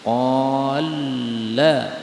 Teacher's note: ini lam ketemu lam boleh idgham menjadi qalla